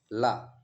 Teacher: जो ल है ये पार्श्विक है